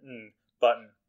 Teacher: And so that's something that phonologists or phoneticians, whatever, people who study sounds, call a syllabic N because it's an N that is being a syllable all by itself with no vowel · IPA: [bʌt.n]